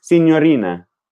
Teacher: senorina which has the flapped r